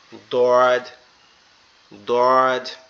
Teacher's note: আমাদের জিহ্বার গোড়া অর্থাৎ আমাদের জিহ্বার একবারে ভিতরের অংশটা ডান পাশের মাড়ির সঙ্গে লাগবে, ডান পাশের মাড়ির সঙ্গে লাগবে, এরকম ভাবে দোয়াদ, দোয়াদ, দোয়াদ।